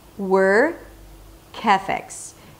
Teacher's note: So the k sound becomes the beginning of the word ethics